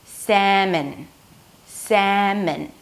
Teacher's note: The second syllable has an M sound, a schwa, so there is no O, and an N. So it's not mon, it's min.